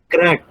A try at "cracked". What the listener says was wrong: ক্র্যাকড। এর সাথে সবাই উচ্চারণ করেন, ক্র্যাকড। উচ্চারণ হবে ট, ক্র্যাকড। সবাই ক্র্যাকড। ট, শেষের উচ্চারণ হতে হবে ট, ক্র্যাকড। যারা আমার সাথে উচ্চারণ করেন, ক্র্যাকড।